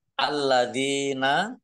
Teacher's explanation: Alladzina lamnya dibaca double, ada tasdidnya. Dal kasroh ya sukun mat tobi'i panjang 2 harokat.